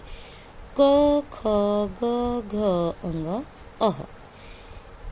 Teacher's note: इन सब वर्णों का उच्चारण स्थान है कंठ। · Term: कंठ्य